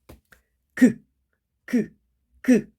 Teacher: 저 뒤쪽, 입 뒤쪽쯤에서 공기의 흐름이 방해를 받는다라는 느낌이 들 거예요